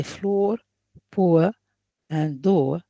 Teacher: When I say floor, pour, and door, here I'm rounding my lips in order to produce the vowel. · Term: rounded vowel